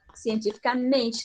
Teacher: A palavra agora é uma paroxítona. A palavra, a sílaba mais forte agora é o men